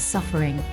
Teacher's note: suffer does not have a stressed fur syllable